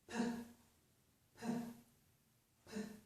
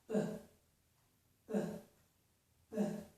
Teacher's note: We make the sounds by putting our lips in the same position. We close our lips like this, and that stops the air. Then when we open our lips, we release the air. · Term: stop sounds